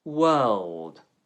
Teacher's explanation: The lips round for the W sound, then spread outwards for the vowel. World. Make sure you pronounce the L.